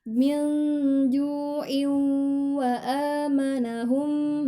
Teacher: ketika bertemu dengan waw maka dia digunnahkan, dimasukkan ke huruf wawnya